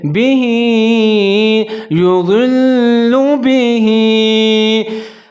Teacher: हा के नीचे खड़ी ज़ेर है, थोड़ा सा इसको लंबा पढ़ेंगे